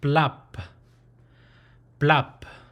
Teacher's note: but with an ending p sound right and it's a breathy it has more of a breathy ending sound